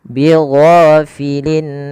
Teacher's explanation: Ghain panjangkan 2 harakat dan dia jangan dibaca dengan go, jangan bighafilin ya, tapi bigho, bighafilin amma.